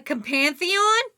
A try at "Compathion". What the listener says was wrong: There's no N in there, though. There's no N in the middle. Compathion. No, comp is right. You're adding read. Pantheon. That's what you're saying.